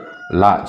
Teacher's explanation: நாவின் இரு பக்கங்களும் தடித்து மேல் பற்களின் அடியை தொடுவதால் தோன்றும் எழுத்து